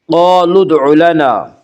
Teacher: قاف کو پر پڑھیں گے، قاف حروف مستعلیہ میں سے ہے۔